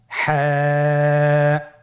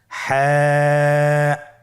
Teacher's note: হা হরফটি উচ্চারিত হবে কন্ঠনালীর মধ্যখান হতে। গলা চিপে ধরে আপনি উচ্চারণ করুন।